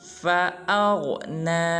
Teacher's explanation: جب حمزہ کو غین کے ساتھ ملائیں گے تو غین کو پر ادا کریں گے، اور بعض مسلمان پڑھ دیتے ہیں فَأَغْنَ، یہ بالکل غلط ہے۔